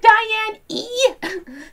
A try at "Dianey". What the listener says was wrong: Yeah, make it sound like one word with a Y, but yeah.